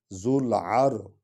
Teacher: ذو العر اور را کو پر پڑھیں گے کیونکہ را سے پہلے والے حرف پر فتح ہے، زبر ہے.